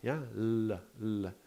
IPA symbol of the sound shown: l